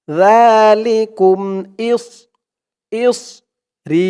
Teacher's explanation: সদের উচ্চারণটা করার সময় মুখটা একটু ভরপুর হয়ে যাবে এমন মনে হবে জালিকুম ইসরি এক আলিফ টান জের পরে ইয়া